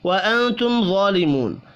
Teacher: میم ساکن کے بعد وا ہے، یہاں پر اظہار شفی ہوگا، غنہ نہیں ہوگا